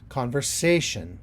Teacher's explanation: I have the syllable stress on the sation, on the say of sation.